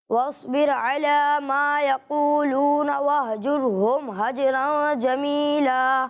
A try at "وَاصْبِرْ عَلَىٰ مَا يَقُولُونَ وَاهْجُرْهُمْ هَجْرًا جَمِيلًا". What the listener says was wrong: دیکھیں وہی غلطی کی آپ نے کہ یہاں را ساکن ہے، ٹھیک ہے، ایسا نہیں لگنا چاہیے کہ آپ را پر پیش پڑھ رہے ہیں، ٹھیک ہے، واضح ہو کہ